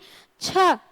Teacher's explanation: जैसे हम बोलते हैं छ, कम हवा निकली, छ, छ बोलेंगे तो मुंह से ज्यादा हवा निकलती है। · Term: महाप्राण